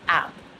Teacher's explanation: Never add the glottal sound to the word app. App. The word is app, not hap.